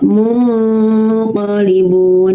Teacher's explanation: Jadi tidak mun, jadi samar ya. Tidak terlalu jelas nunnya. Terutama ketika bertemu dengan ko atau kaf. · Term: Ifa